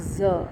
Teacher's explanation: during the production of z sounds, our fingers will be able to feel the vibration of the vocal cords, because the vibrations could be felt, and this can easily be felt practically when you do it with putting your fingers on the Adam's apple. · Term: z consonant